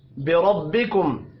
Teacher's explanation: را کو زبر کی وجہ سے پر پڑھیں گے.